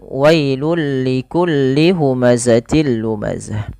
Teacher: Pada lafal wailun ketemu dengan huruf lam, ini masukkan tanwinnya kepada huruf lam. Jadi tidak lagi dibaca wailun likulli huma, tapi tanwinnya dimasukkan kepada huruf lam